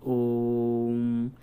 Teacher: अगर 1 सेकेंड ह्रस्व स्वर के लिए लग रहा है, तो 2 सेकेंड दीर्घ के लिए और प्लुत के लिए लगेंगे 3 सेकेंड। तो जो ओम है वो 3 सेकेंड में बोला जाना चाहिए।